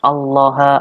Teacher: Lam di sini, lam jalallah di sini, itu bacanya adalah tafkhim, artinya adalah tebal.